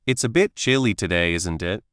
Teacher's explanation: you'll notice the slight pause before, isn't it? The way the voice goes up a little at the end and the relaxed, easy way it said.